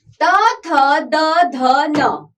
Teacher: ये ता वर्ग के व्यंजन दांत को स्पर्श करते हैं।